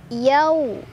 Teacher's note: ada harf lin karena ada waw sukun sebelumnya fathah, dibacanya dilunakan